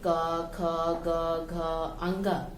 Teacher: इन वर्णों के उच्चारण में स्वर की सहायता लेनी पड़ती है। इनके उच्चारण के लिए वायु थोड़ी अवरुद्ध होकर, अवरुद्ध मीन्स रुक कर, मुख से बाहर निकलती है। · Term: व्यंजन वर्ण